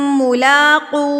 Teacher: لام کے اوپر کھڑی زبر ہے تو اس کو ہم 2 حرکت کے برابر کھینچیں گے